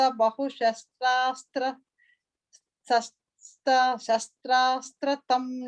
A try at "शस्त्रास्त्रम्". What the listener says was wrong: I think you're saying an extra th there. Shastrastram.